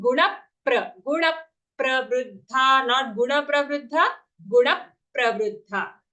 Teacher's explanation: There is an aghata on na. So because there is an aghat, we will give extra stress on the na sound.